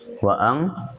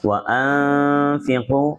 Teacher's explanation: dihilangkan n-nya tapi menjadi eng